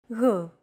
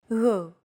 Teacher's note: It's like a very soft, continuous, and loosely held G, almost as if you're gargling, but don't make it sound too throaty.